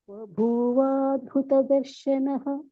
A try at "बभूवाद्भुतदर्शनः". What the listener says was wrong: Correct.